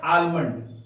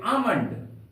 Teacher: आलमंड, A L M O N डी, आलमंड, जो बिल्कुल गलत है। यहां पर एम के पहले एल है, इसलिए इस एल का उच्चारण नहीं होगा। तो हम लोग पढ़ेंगे आमंड।